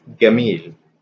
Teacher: the G sound in Egypt is for jim. So jim becomes ga.